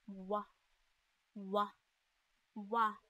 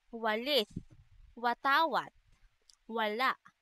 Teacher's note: W naman ay may tunog na isinasaad sa paraan ng malapatinig at sa punto ng pangalangala na velar.